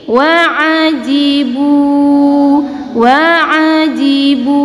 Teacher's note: Di sini terdapat dhammah yang diikuti oleh waw sukun. Kita panjangkan dua harokat